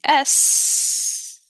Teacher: the B it completely stops the air flow the S uh the fact that we can hold that sound for a while tells us we're not completely stopping the air flow rather we're constricting it quite a deal and creating some friction